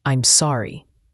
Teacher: sorry has a clear O sound like in hot, and a light R sound.